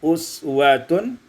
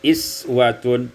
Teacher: uswatun, kasrul hamzah, dikasrahkan hamzah menjadi iswatun